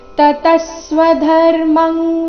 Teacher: ತತಃ ಸ್ವಧರ್ಮಂ, ಇಲ್ಲಿ ಅನುಸ್ವಾರದ ಉಚ್ಚಾರಣೆ ಕ ವರ್ಗದ ಅನುನಾಸಿಕದ ರೀತಿ